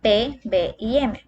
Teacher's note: podemos notar como nuestros labios se juntan al pronunciarlas